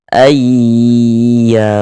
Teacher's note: Kemudian di bagian a di bagian situnya tuh kita tahan sejenak suara kita. Nah kita ghunahkan kira-kira sepanjang dua harakat.